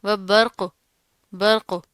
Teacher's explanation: با باریک ہے، رو موٹا پڑا جائے گا، قوف بھی موٹا پڑا جائے گا